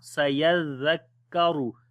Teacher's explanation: Ra we read also in heavy sound